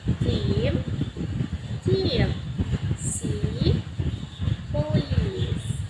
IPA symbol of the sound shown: i: